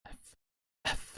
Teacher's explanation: to take away the beginning part of the letter f so it's just going to be the air flowing in between your teeth and your lips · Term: brush